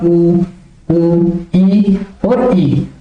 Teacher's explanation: इनका उच्चारण करने में मुख बंद सा ही रहता है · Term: समव्रत